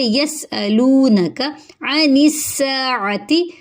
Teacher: یسألونک عن الساعۃ، عین حلق سے ادا ہوگا، نون کو سین سے ملائیں گے، سین میں سیٹی کی آواز آئے گی، ایک الف کے برابر لمبا کریں گے کیونکہ الف مدہ ہو رہی ہے۔